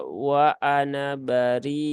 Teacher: ketika diwasal dia tidak dibaca alifnya ketika wakaf baru terbaca